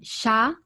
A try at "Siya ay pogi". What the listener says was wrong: Siya ay pogi. Tama. Very good.